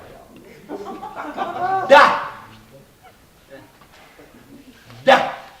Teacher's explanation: La consonne D, par exemple, se prononce en donnant du bout de la langue au-dessus des dents d'en haut